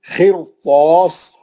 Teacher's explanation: خر را موٹا پڑھ کے توئے موٹا پڑھیں گے اور مد اصلی